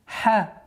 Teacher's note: Мягкий звук в размере двух огласовок